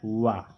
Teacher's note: वकार का मतलब है वा। ये जो वा वर्ण होता है इसका उच्चारण स्थान होता है दंत ओष्ठ